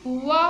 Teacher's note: वा का उच्चारण जब हम करते हैं तो दांत और ओष्ठ दोनों का प्रयोग करते हैं, तो इसलिए इसका नाम क्या है, दंतोष्ठ।